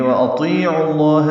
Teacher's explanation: حمزہ واو ہونٹوں کی تمام گلائی سے، حمزہ اقصی حلق سے